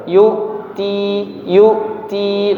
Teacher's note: suara hamzahnya putus tapi tidak perlu dihentak ya